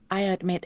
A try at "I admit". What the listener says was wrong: 전반적인 리듬을 생각해서 D 발음 살짝 난 거. 오케이. It's okay. It's not bad. It's not bad. I admit. 그래도 D가 안 들리는 게 좋아요. 아예. I admit. 그냥 I admit.